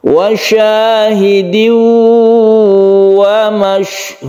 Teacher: ada tanwin bertemu dengan wawu, maka dibaca idgham bi gunnah, kita panjangkan.